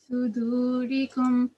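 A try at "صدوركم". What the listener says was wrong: Yeah, so don't stay on the letter meme for too long, and don't hold the nasal sound either.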